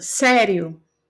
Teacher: sério o i quase não sai né e o o sai maior volume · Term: semivogal